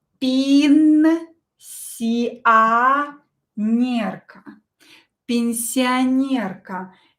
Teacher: Ye will be pronounced as E. O will be pronounced as A.